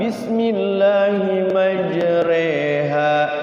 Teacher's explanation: re itu di tengah-tengah jadi cenderungnya ke I tapi dia di diimalahkan Bismillahi majreha bukan majriha majreha mendekati I tapi tidak I tulisannya